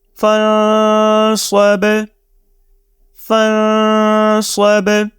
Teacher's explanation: تو جیسے یہاں پہ صاد حروف اخفا میں سے تھا تو تب ہم نے اس نون کو، نون ساکن کی آواز کو اپنے ناک سے نکال کے یہاں پہ اخفا کیا، یعنی کہ غنہ کی طرح سے اس کو ریڈ کیا۔